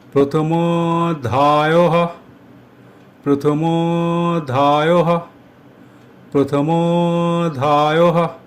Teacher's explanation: ময়ের সঙ্গে ওকার যুক্ত হলো আর অবগ্রহের চিহ্ন বসল। উচ্চারণের ক্ষেত্রে মো এর উচ্চারণ দীর্ঘ হবে। মো উচ্চারণ করতে যতটা সময় লাগে তার চেয়ে কিছুটা বেশি সময় নিয়ে উচ্চারণ করতে হবে।